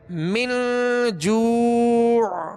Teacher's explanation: اخفاء کریں گے، یعنی ناک میں آواز کو لے جا کر ظاہر نہیں بلکہ چھپائیں گے